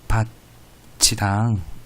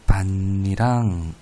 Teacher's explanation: 밭이랑에서 구개음화가 일어난 건 쉽게 확인할 수 있죠. 티읕이 이를 만나 치읕이 됐네요.